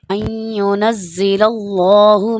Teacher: یہاں پر جیسا کہ میں نے بتایا تھا کہ مفتوح ہے، یہاں پر زبر ہے لام کے اوپر، تو اللہ کا نام پر کر کے پڑھا جائے گا